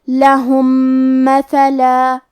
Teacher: ہم پہلے میم کو دوسرے میم میں ملا کے ایک ہی میم غنہ اور تشدید کے ساتھ پڑھیں گے · کلمت مثلا میں ثا ہے اور ثا کی ادائیگی زبان کے سر اور اوپر والے دانتوں کے اندرونی کناروں سے ہے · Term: ادغام متماثلین صغیر